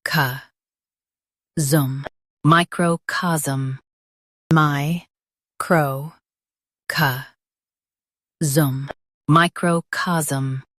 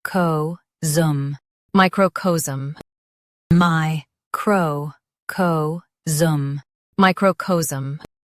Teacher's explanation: US says ca. UK says co.